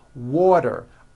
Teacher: Water is pronounced as water. The T turns into a D and the whole word is voiced.